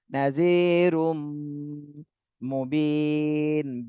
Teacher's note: বিতে 3 আলিফ টান দিতে হবে, আর নুনে জজম দিয়ে পড়তে হবে